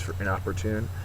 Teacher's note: it's an adjective the last syllable the fourth syllable is accented